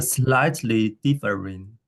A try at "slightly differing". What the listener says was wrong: Yeah, that's pretty good actually.